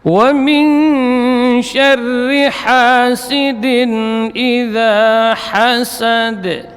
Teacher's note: Huruf waw di sini rakhawah dan jahar sama, itu huruf yang keluar dari dua bibir, paduan dua bibir